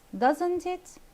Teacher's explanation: So here I'm raising my voice when I say doesn't it. I'm having a rising intonation to get an answer because I'm not certain.